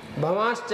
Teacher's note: ये च के कारण से श हो गया, तालव्य श हो गया। भवांश्च अलग करेंगे तो ये ऐसा दिखाई देगा।